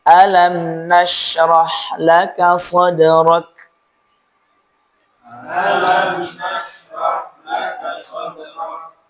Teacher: Ya kafnya ingat, jangan rak, rak. Jadi percikannya kecil, kafnya ditekan kuat.